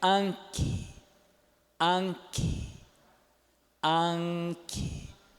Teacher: Esse I é surdo. · É aquele nasal velar com ganchinho, igual de manga, né? Só que não nasaliza o A, não é é an. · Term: vocóide surdo